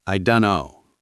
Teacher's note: Right, the T sound disappears.